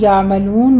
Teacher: یعملون میں عین وسط حلق میں جا کے سٹاپ کرنا ہے